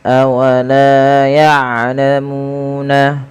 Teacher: panjangkan huruf lam sepanjang 2 harakat dan huruf mu sepanjang 2 harakat karena kedua bacaan ini adalah mad tabi'i